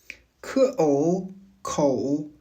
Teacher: La pointe de départ est un O déjà assez fermé et profond. Le mouvement consiste à arrondir et projeter les lèvres encore davantage pour glisser vers un O très serré. Contrairement au O français qui est un son unique et stable, le O chinois est un mouvement.